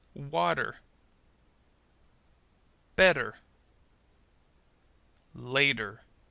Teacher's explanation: T sounded more like a D or R sound that's because we use a flapping or tapping of the tongue to produce the sound · we use a flapping or tapping of the tongue to produce the sound. This change in sound helps to make the pronunciation of these words easier and even a little faster. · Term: flap T